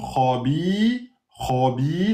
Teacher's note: la kha emphatique, bi deux temps